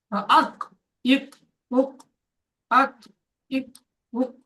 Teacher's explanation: দেখেন মাখরাজের জায়গা লেগে আলাদা হয়ে যাচ্ছে। কফের মাখরাজ জিভের গোড়া তার বরাবর উপরে তালুর সাথে লেগে